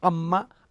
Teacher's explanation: నోరు తెరిచాడు, గాలి బయటకు వచ్చింది, ఆ అంటున్నాడు. పెదవులు మూసుకుంటున్నాయి. ఈ మూతబడిన గాలి ఎక్కడికి వెళ్ళాలి? నాసిక నుంచి వస్తోంది, మకారం పలుకుతోంది